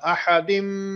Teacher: اب اس میں ادغام ہو رہا ہے احدم، ٹھیک ہے. احدم یہاں پر آپ نے غنہ کریٹ کرنا ہے